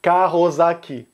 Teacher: O primeiro ponto que você vai notar é que, falando rápido, você não pronuncia o S final da palavra carros solto. Como a próxima palavra começa com uma vogal, as palavras são aglutinadas, elas se juntam.